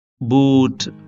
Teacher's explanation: ఇక్కడ టంగు బాగా పైకి ఉంది అలాగే పూర్తిగా వెనక్కి ఉందన్నమాట అంటే ఇది బ్యాక్ క్లోజ్ ఓవెల్ అన్నమాట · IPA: / uː /